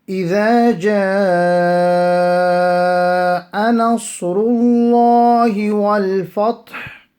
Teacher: here we have a mad muttasil. Lengthening will be up to 4 seconds long, 3 to 4 seconds long.